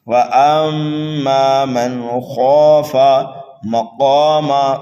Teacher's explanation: قاف کو پر کر کے پڑھنا ہے، کھینچ کر کے پڑھنا ہے · میم مشدد ہے، غنہ کر کے پڑھیں گے، نون ساکن کے بعد خا حروف حلقی میں سے آنے کی وجہ سے یہاں پر اظہار کریں گے، خواہ کو ہم پر کر کے پڑھیں گے۔